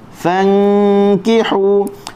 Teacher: Okey, ikhfa maksudnya kita menyembunyikan huruf nun. Huruf nun kita tak boleh sebut di makhrajnya, tak boleh baca fan, tak boleh, kena tahan di tengah, disertakan dengan kita dengun di sisi huruf kaf.